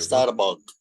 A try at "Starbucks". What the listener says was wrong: The mouth again. When you say the word star, do this. Starbucks. Move the mouth. Starbucks.